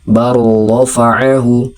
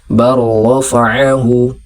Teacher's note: huruf pertama tidak lagi terbaca dan huruf kedua dibaca seperti bertasydid. Jadi bacaannya melebur ke huruf yang kedua. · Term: idgham mutaqaribain